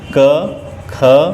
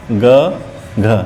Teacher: क और ख जो है ये अघोष है तो ग और घ घोष है।